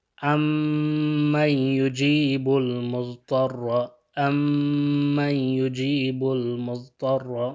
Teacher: یہ میم ساکنہ جو ہے یہ میم متحرک میں کیا ہو جائے گا؟ ادغام ہو جائے گا۔